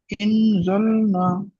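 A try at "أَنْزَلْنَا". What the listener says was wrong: ইন কেন হচ্ছে? আনজালনা।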